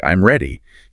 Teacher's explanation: A falling intonation for a statement like, I'm ready, conveys finality or certainty.